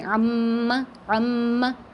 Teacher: یعنی ناک میں آواز لے جانا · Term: غنہ